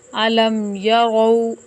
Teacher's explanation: اس میم پر غنہ نہیں ہوگا بلکہ میم کو ظاہر کر کے پڑھیں گے